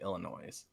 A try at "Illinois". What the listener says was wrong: I like how you pronounce the S at the end of Illinois.